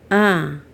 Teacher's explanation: in English ah is a long vowel with neutral lips